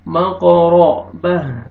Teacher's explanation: क़ाफ क़लक़ला, रा को मरज़बर है, रा को मोटा करके पढ़ेंगे